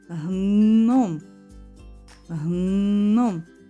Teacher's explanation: Ми чуємо твердий звук н всередині слова